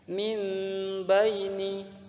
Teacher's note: lagi mimbaini ada huruf nun bersyukur bertemu dengan huruf ba depannya Apabila ada nun mati bertemu huruf ba maka hukum bacaan iqlab cara membacanya adalah mengganti huruf nun ke huruf mim